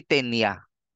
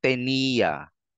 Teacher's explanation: habaan mo ng konti yung yung bigkas doun sa e tenia hindi tenya